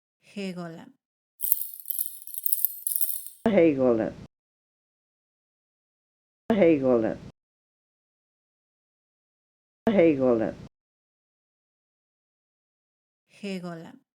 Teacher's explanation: it's sort of a softer G made more in the back of the throat